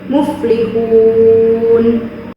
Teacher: Selanjutnya yaitu mad arid li sukun karena ada huruf mad tabi'i di akhir kalimat atau waqaf. Cara membacanya yaitu dengan panjang 4 harokat, yaitu muflihun.